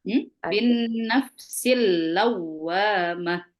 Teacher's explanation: Wawunya bertasdid tapi tidak boleh didengung. Ya. Hanya dimasukkan saja itu tasdid.